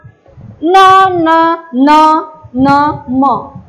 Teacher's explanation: अनुनाशिके ज्याचा उच्चार नाकातून होतो त्याला अनुनाशिके म्हणतात, की नाकातून उच्चार होतो कोणता न न न न म हे झाले अनुनाशिके।